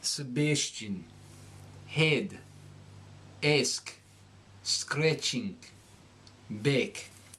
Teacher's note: You will nasalize the short A.